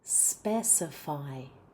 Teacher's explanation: That has the stress on the first syllable.